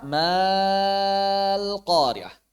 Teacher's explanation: tidak alifnya dihadf ini Hamzah wasal langsung masuk ke lam malqah maka secara suara Sama persis dengan begini secara suara ya